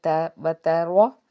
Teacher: نہیں ہوگا، واو زبر با تا زبر تا، را جو ہے را کے اوپر زبر ہے اس لیے اس کو ہم نے پر پڑھنا ہے